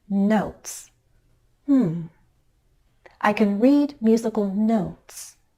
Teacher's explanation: My pitch changes on the word notes. That's the final content word, which makes it the focus word of the sentence.